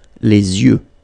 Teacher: you make this liaison between the two, les yeux. Okay, final X not pronounced, les yeux.